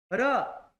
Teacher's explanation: र touch तो हुआ लेकिन जल्दी वापस आ गया। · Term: अंतस्थ